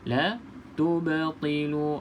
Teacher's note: qalqalah sughra, lantunannya sedikit. La tubtilu. Okey, ringan saja lantunan dia, tak perlu kita tekan